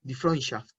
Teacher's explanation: Entonces, estos dos sonidos son exactamente iguales. Cuando tenemos la E con la U, suena hoy. En palabras como esta, die Freundschaft. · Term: diptongo EU